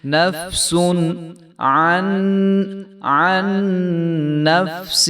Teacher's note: یہ جو عین کے ساتھ والا نون ہے جو ساکن ہے یہ نہیں پڑھا جائے گا، یہ سائلنٹ ہو جائے گا